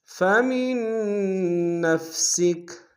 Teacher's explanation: فمن میں نون ساکن کو بشد ہے، زور دیں گے